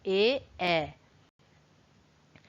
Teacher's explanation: उसी प्रकार ए इनका जो होता है वो होता है कंठ तालु, क्योंकि ए में आपकी जीभ तो सीधी रहती है यानी कि तालव्य ध्वनि है, लेकिन गले से भी आवाज आनी ही आनी चाहिए। तो इसलिए ये कंठ तालु होते हैं, ए।